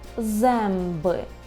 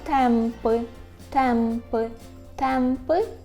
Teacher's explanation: вимовляється як м якщо далі іде буква б або п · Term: звук м